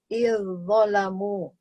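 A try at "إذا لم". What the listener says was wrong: Jadi dibacanya bukan gini Bu. Nih, izzalamu, enggak izzalamu, tapi langsung tebal bunyinya. Izzalamu gitu. Tidak dibaca izzalamu, tidak, tapi langsung bunyinya tebal.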